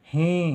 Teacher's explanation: ह के साथ बड़ी ई की मात्रा लगेगी क्योंकि ही देर तक बोला जा रहा है